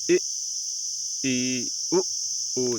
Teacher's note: संवृत मुख द्वार लगभग बंद सा हो उसे हम, जैसे इ, ई, उ, जैसे इसमें हमारा मुंह खुल ही नहीं रहा है दोस्तों।